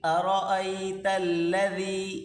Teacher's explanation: یہاں پر را کو موٹا کر کے پڑھیں